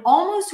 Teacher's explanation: in almost, we barely hear the L